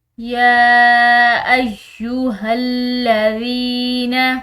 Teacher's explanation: یا کے اوپر کھڑی زبر ہے، ساتھ میں یہ چھوٹی مد ہے تو ہم اس کو کھینچ کر لمبا ادا کریں گے